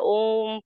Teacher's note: प्लुत स्वर भी हुआ ये दीर्घ से थोड़ा सा और दीर्घ है